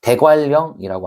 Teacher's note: 그다음에 대관령이라고 하는 것도 니은과 리을이 만나서 니은이 리을로 바뀌는 현상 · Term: 유마